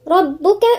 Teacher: الراء مفخمة، الباء مشددة